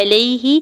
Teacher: یا ساکن سے پہلے لام کے اوپر زبر یا لین ہو رہا ہے، نرمی سے موڑتے ہوئے ادا کریں گے ، ہا کی زیر کو لام ساکن کے ساتھ ملاتے ہوئے